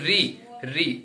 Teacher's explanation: ठीक है, अब मूर्धन्य स्वर, मूर्धन्य बोलेंगे, आप बोलेंगे री, अब री बोलने में आप देखिए जो हमारी जीभ है ना, वो तालू से थोड़ा पीछे की और टच कर रही है, उसे हम मूर्धन्य स्थान बोलते हैं।